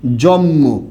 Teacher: দেখলে পুরোপুরি ভালোভাবে বুঝবেন এখানে প্রথম ব্যঞ্জন ন পরের ব্যঞ্জন মই ম এর প্রভাবে ন পরিবর্তন হয়ে কিন্তু ম হয়ে গেছে সমীভবন হয়েছে কিন্তু পরেরটার প্রভাবে প্রথমটা পরিবর্তন হয়েছে আবার ঠিক সেম